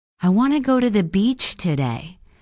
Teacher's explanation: Notice how I stress the words want, go, and beach. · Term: the content words